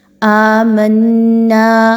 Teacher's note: دیکھیے حمزہ کھڑا زبر، دو حرکات کے برابر لمبا کریں گے۔